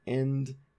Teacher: in the word end air goes through the nasal cavity so it's a nasalized vowel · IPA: [ɛ̃nd]